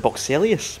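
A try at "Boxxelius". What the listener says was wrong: There's an R in there, is there not?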